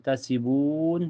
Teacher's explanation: Cara bacanya panjang bisa 2, 4 sampai 6 harokat, tetapi harus konsisten pilih salah satunya mau 2, 4 atau 6 harokat. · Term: mad arid disukun